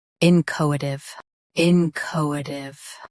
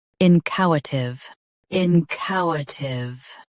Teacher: US ends with tuv. UK ends with tiv.